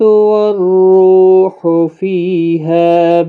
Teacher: والروح رو واو مدہ ہے، فی یا مدہ ہے، ہا الف مدہ ہے، تینوں کو 1 1 الف کی مقدار کے برابر کھینچیں